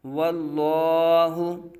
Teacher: پہلے واو کے اوپر زبر ہے تو لام کو پر پڑھا جائے گا